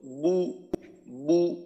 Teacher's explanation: আর পেশের সময় একেবারে যতটা সম্ভব ঠোঁটটাকে গোল করে বু বু উচ্চারণটা একেবারে ঠোঁট গোল অবস্থাতেই বের হবে। আওয়াজটা যখন বের হবে মুখ থেকে ওই সময়টা আমাদের ঠোঁটের অবস্থাটা থাকবে একেবারে গোল, বু বু। এইটা গেল হরকতের সময়, হরকতের ক্ষেত্রে। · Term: পেশের উচ্চারণ